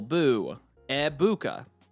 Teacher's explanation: The emphasis is on the middle syllable.